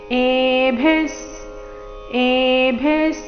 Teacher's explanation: ವಿಸರ್ಗದ ಉಚ್ಚಾರಣೆ ಇಲ್ಲಿ ಅರ್ಧ ಸ ರೀತಿ. ಭಿ ಮಹಾಪ್ರಾಣ ರಸ್ವ ಇದೆ.